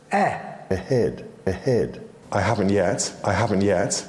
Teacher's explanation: the vowel in the word dress was made with a closer mouth position in RP